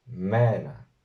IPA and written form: 'meː.na (MENA)